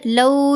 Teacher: लाम के ऊपर ज़बर, साथ वाव साकिन, तो ये वाव लीन है इसलिए हमने लौ आवाज़ पढ़ी